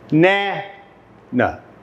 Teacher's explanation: In the word banana, the first and third syllables have the schwa sound.